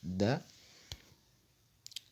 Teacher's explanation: Elle se prononce en appuyant l'apex, le bout de la langue, contre les alvéoles palais et en faisant un souffle mou. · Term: Dalun